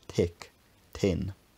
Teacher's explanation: Modern Irish, correct me if I'm wrong, doesn't have a th sound, and correspondingly many but not all dialects of Irish English also don't have a th sound, replacing it with an aspirated dental t sound, tick, tin.